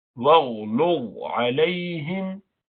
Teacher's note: Ghain and la are both from huruf musta'liya. You pronounce them with elevation of the base of the tongue.